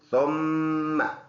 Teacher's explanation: ثم، ثا نرم حرف ہے، میم مشدد ہے، اس میں ہر حال میں غنہ ہوگا، ناک میں آواز لے کے جائیں گے